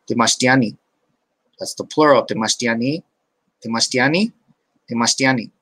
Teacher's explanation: Temastiani is pluralized by adding the glottal stop at the end. That means you constrict your glottis.